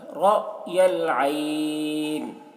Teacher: یہاں پر میم ساکن کے بعد را ہے، اظہار شفوی ہوگا، میم کو ظاہر کر کے جلد پڑھیں گے، را کو پور پڑھیں گے، را کے اوپر زبر ہے، اور یہ حمزہ ساکنہ ہے تو اس کو جھٹکا لگا کر پڑھیں گے، را، اس طرح، رأی العین۔